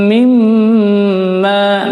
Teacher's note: mim tasydid ini adalah mim gunnah ya, atau gunnah mim, ditahan juga